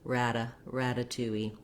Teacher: the first um syllable has a little stress so we do have the a black cat vowel there it does sound like the word rat or the word rad